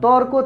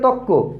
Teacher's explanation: শব্দের ভেতর থেকে যদি র ধ্বনি লোপ পায় তাহলে সে বিষয়টাকে রকার লোপ বলা যায়।